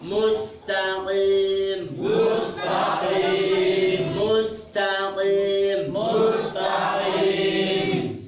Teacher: Dari pangkal lidah keluar darinya huruf qaf.